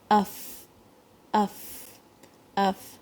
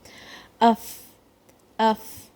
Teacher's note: فا میں جو نیچے کا جو ہونٹ ہے اس کی اندر کی سائڈ جو ویٹ سائڈ ہے وہ دانتوں کو ٹچ ہوتی ہے, اوپر کے دانتوں کو. اف اف, اور ساتھ میں ایئر بھی ایکسپیل ہوتی ہے.